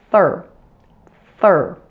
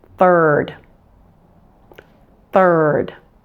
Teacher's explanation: I have my tongue firmly pressed against my upper front teeth you still do see some of the tongue coming out but